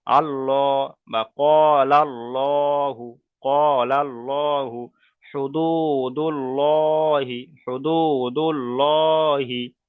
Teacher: মুখটা গোল হয়ে যাবে পুর করার সময়। তাহলে পুরের আওয়াজ হলো ল, পুরের আওয়াজ হলো ল।